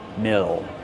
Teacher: Mill, use the short I sound like this is. Mill. Plus the dark L.